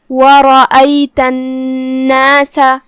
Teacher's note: یہاں نون پہ تشدید ہے، ہم نون کو 2 حرف کے برابر پڑھیں گے کیونکہ تشدید کی اصلیت 2 حرف ہوتی ہے.